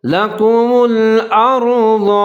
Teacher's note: را ساکن سے پہلے حمزہ کے اوپر زبر ہے تو را کو موٹا پڑھیں گے